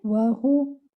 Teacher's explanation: You will circle your lips for the waw. You will also circle your lips for the ha, because this ha is with dhamma.